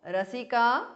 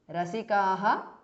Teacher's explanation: visarga is dropped because of sandhi